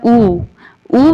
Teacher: ऊ बोलते समय हमारा मुंह गोलाकार हो जाता है, तो इसे कहेंगे वृत्तमुखी।